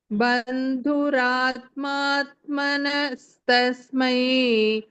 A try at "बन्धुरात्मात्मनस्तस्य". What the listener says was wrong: तस्य ma? Manastasmai you said. Tasya. Tasmai will be the fourth case. Tasya is the sixth case.